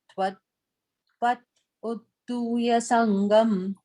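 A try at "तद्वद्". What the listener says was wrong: And the third line again, on the same portion, you're saying Tvad, you're saying Twa, it is Tad, Tadvad. Tadvad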